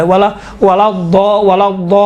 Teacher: تشدید کی وجہ سے لام کا تلفظ تھوڑا سا موٹا اور ضخیم اور غلیظ طریقے سے کیا گیا ہے